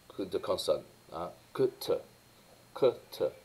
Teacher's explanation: tous les deux sont des consonnes occlusives. Donc là, il n'y a pas de différence verticale.